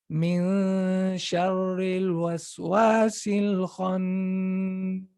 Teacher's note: The ghunna time, it's just a little bit less than the time of the idgham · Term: ikhfa